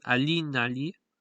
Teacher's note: because it has two feet the main stress will be on uh the last syllable of the left most foot so it will be Lee